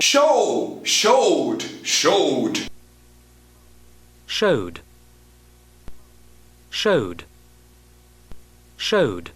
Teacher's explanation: Você vai continuar cortando o E, mas pelo menos o som final vai ser representado pela letra correspondente. A palavra vai acabar com D, você vai prestar atenção no D, cortar o E e acabar com D. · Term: ED pronounced D